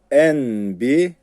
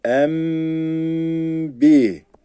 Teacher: B harfi gelirse n'yi m'ye çeviriyoruz arkadaşlar n harfini m'ye çeviriyoruz